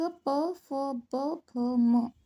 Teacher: प वर्ग प, फ, ब, भ, म ओठों के स्पर्श से ओष्ठ्य